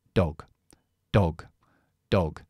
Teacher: es la o corta pero es un poco más larga Porque llevo una G y la g es g g g es Sonora Así que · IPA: /ɒ/